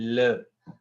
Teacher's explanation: जैसे आप sound produce करते हैं ल, ल में क्या हो रहा है कि the air from the lungs that is basically moving outward from the sides of your tongue. ठीक है, तो ऐसी जो साउंड्स होती हैं उनको क्या कहते हैं? · sounds produced by letting air flow around the sides of the tongue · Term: लिक्विड